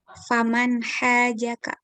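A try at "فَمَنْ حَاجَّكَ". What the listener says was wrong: Nah, bunyi nunnya itu apa? Keluar gitu. Ada bunyi n-nya. Jadi kalau ketemu aha, akhogehu, ya pokoknya nama gehu, udah itu n-nya dimunculin.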